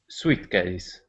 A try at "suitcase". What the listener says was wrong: Now that word is pronounced suitcase. Yeah, the I would not be pronounced there. Suitcase, okay?